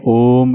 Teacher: ओम ऐसे तो लंबी ध्वनि में बोलते हैं, तो यह प्लुत स्वर का ही भाग है।